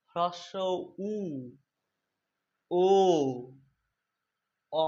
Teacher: তুমি একটু ভালো করে লক্ষ্য করে উচ্চারণ করবে, ঠান্ডা মাথায়, আস্তে আস্তে, তাহলে বুঝতে পারবে যে এই বর্ণগুলো উচ্চারণ করার সময় আমাদের জিভগুলো কোথায় যায়? জিভটা পেছনের দিকে যায় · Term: পশ্চাৎ স্বরধ্বনি